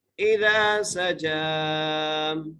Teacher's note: سین کو سیٹی سے، جیم کے اوپر کھڑی زبر ہے، جیم کو ایک الف کی مقدار کھینچ کے پڑھیں گے۔